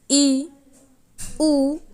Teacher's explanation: समृत का अर्थ होता है कि मुख का थोड़ा खुलना या सबसे कम खुलना, जिनमें ई, ऊ को रखा गया है।